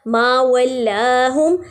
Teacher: اب اس میں دیکھیے اللہ کا نام نہیں ہے، ٹھیک ہے، اس لیے اس لام کو باریک پڑھے ہیں. ما ولاہم الا الذین، ساری لام باریک ادا ہو رہی ہیں.